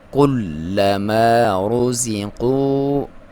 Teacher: را کو موٹا پڑھیں گے کیونکہ اس کے اوپر پیش ہے، زبر یا پیش ہو تو موٹا پڑھا جاتا ہے.